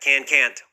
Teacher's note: a lot of people have a hard time hearing that little T sound at the end for the negative